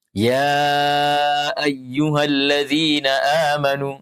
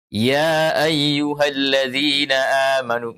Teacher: Ya-nya dipanjangkan 4 harakat karena disuruh kita baca dengan mad. Kalau guru kita mengatakan baca dengan qasar, maka kita nanti akan membaca ya ayyuhalladzina amanu, membaca 2 harakat.